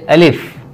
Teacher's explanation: الف، الف جو ہے اس کا مخرج جو ہے یہ منہ کا خالی حصہ ہے، منہ کے خالی حصہ سے الف جو ہے وہ ادا ہوتا ہے